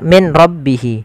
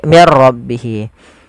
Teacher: langkah pertama suara nunnya dimasukkan ke ro dan diganti menjadi R · berupa idgham bila ghunah yaitu adanya nun sukun bertemu dengan ro Apabila ada nun sukun bertemu dengan ro maka di sini jangan dibaca Min rbihi tapi diganti menjadi mirbihi Bagaimana langkah membacanya langkah pertama suara nunnya dimasukkan ke ro dan